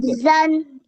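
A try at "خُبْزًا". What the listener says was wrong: Khub. Ba ko kalkala ho. Khub, no wrong. How you say zan? You can't read at the end Fathatain. Fathatain का क्या rule पढ़ा है आधे घंटे से हमने?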